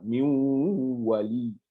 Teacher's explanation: au lieu de dire min wali, on dira miou wali avec le nasiment.